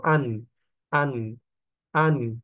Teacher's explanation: পড়তে হবে যে গুন্না করবো নাকি গুন্না করবো না তাইলে এখানে নুন সাকিনের পরে আইন আসছে ইনজহার স্পষ্ট তাইলে এখানে আন এরকম গুন্না করা যাবে না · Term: ইজহার